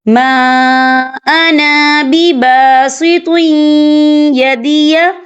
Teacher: تنوین کے بعد جو ہے یا آ رہا ہے، اور یا جو ہے حروف یرملون میں سے ہے تو یہاں پر ادغام ہوگا، تو ہم اسے تھوڑا سا غنی کے ساتھ پڑھیں گے۔